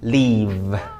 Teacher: Leave. Dengan bunyi I panjang dan dengan akhiran konsonan V. Bergetar.